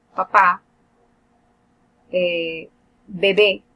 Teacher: Por ejemplo, tenemos papá, bebé. La primera B es oclusiva totalmente, la segunda no. La segunda es aproximante.